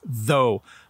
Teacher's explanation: My tongue is between my teeth when I say, though.